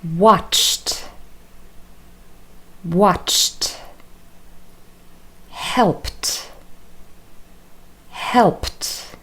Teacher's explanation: So first of all, we are going to practice the pronunciation of verbs where ed is pronounced as t. So there are lots of consonant sounds next to one another